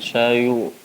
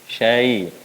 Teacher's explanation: Tipiskan ya-nya, bukan syayu, syai.